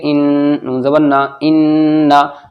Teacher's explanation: نون کے اوپر تشدید ہے تو غنہ ہوگا